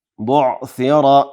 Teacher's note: بعثر د ثا په ځای باندې سین ونه ویو، داسې ونه ویو بعثر، بعثر سین نه ده بلکې ثا ده. بعثر را زور لري ډکه تلفظ کیږي